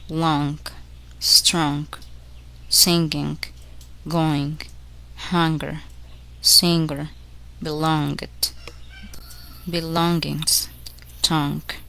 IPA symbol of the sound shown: ŋ